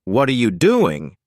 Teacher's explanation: on the other hand W questions like what are you doing usually have a falling intonation with your voice dipping on the last word